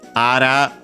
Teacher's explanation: accent on the last mora, technically